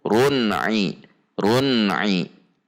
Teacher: tanwin ini dibaca izhar halqi dibaca jelas pendek tidak dengung